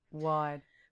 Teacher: I would say wide, and my lips would come together and round. Wide. Whereas yours don't.